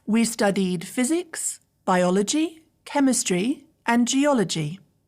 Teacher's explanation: the first three words in my list physics biology chemistry are all Rising intonation and the last word in the sentence geology is falling intonation